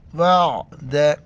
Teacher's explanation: عین کو گلے سے ادا کرنا ہے